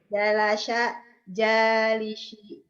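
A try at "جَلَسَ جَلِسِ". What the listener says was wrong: Biasa aja, jangan jadi syek, jadi biasa aja. Es biasa. Saya suka susu sapi, sate, somai, es biasa. Jangan nyanyi nyanisi, jangan digituin, biasa aja. Jalasa, jalisi, es biasa.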